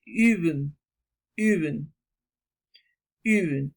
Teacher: se vocaliza poniendo la boca en forma de U, pero se dice una leve I